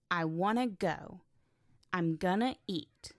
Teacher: Native speakers link words together. Want to becomes wanna. Going to becomes gonna.